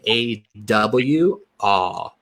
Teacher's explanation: I think of it as a rounder version of ah